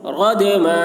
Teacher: दाल साकिन में कलकला होगा